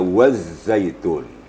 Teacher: ujung lidah kita ditemukan ujung gigi dan Gigi kita dirapatkan Dia ada penekanan sedikit ujung lidah ke gigi kita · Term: tasdid zaai